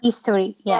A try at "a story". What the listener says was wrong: story. Story. A story. Not history. It's a store. store. A story.